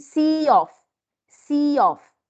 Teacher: we have another sound another word starts with a vowel so the ya sound is intruded in in between the two words